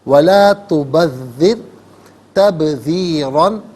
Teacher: تبذر میں را ساکن ما قبل ذال کے نیچے زیر ہے تو را ساکن کو یہاں پر باریک کر کے پڑھیں گے